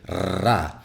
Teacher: In Spanish, we have that trilled R, right? Like the ra, which many people find really hard.